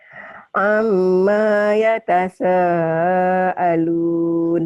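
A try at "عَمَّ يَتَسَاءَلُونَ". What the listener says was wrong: Bukan yatasa, yatasa, yatasa. Amnya pendek. Amma yatasa. Ain. Amma yatasaalun.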